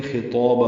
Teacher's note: مد عوض، الف مدہ دو حرکات یہ بھی لمبا کریں گے، طا بھی پر ہے اور اس کا الف مدہ بھی پر ہے